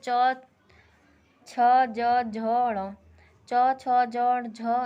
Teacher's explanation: च वर्ग में है उच्चारण के स्थान पे तालु होता है, इसलिए इन्हें तालुव्य व्यंजन कहते हैं।